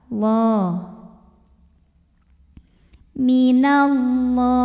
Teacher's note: Lam pada lafaz Allah dibunyikan secara tafkhim sebab huruf sebelumnya berbaris fathah, maka dibacanya tebal.